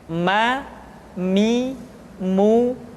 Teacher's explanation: Selanjutnya huruf ma diucapkan dengan cara merapatkan dua bibir.